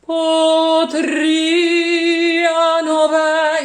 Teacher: Also, when you like potria, like io before, the accent falls on the I of potria, and that's what we need to hear for the whole length of the note